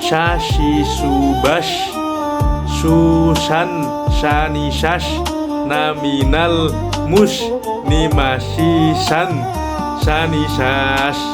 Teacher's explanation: keluarnya huruf dari pertengahan lidah dimantapkan dengan langit-langit atas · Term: shin